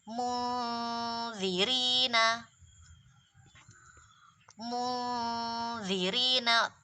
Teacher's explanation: ujung lidah langsung diletakkan di ujung gigi karena makhrajnya dzat, tempatnya di situ.